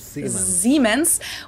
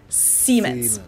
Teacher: And I mean, that might be true, but to German ears, it's really just a very minor difference. Germans pronounce it with a voiced S, which would be a Z in English, Siemens, while English speakers pronounce it with a voiceless S.